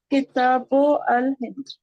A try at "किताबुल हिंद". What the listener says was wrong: किताबुल अल हिंद नहीं होता है, किताबुल हिंद है। क्यों? सुने, किताब है यहाँ, आपने किताब यहाँ सही पढ़ा। अब क्या पेश है, तो पेश लिखेंगे, यानी कि वो पढ़ेंगे।